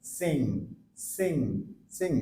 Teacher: এই সাউন্ডটা একদম নাকের মধ্যে থেকে উচ্চারণ হয়ে আসবে